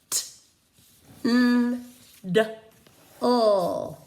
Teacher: in order to say those sounds correctly, your tongue tip was elevated.